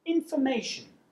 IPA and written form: ɪnfəˈmeɪʆən (information)